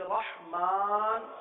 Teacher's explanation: ہے الرحمن، یہاں پر را آ گیا، اس را کو پر پڑھیں گے، ہا کو واضح کریں گے